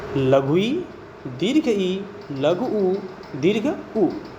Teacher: संवृत वे स्वर होते हैं जिनके उच्चारण में मुख विवर छिद्र लगभग बंद सा रहता है